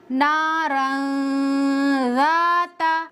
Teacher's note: غنہ کر کے پڑھیں گے، غنہ کس طرح سے کیا ہے میں نے دھیان سے سنیے، نارن ذات، اس طرح سے مت پڑھنا نارن ذات، اس طرح سے اخفاء غلط ہو جائے گا۔ غنہ 1 الف کے برابر کریں گے